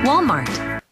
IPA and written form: ˈwɔːlmɑːrt (Walmart)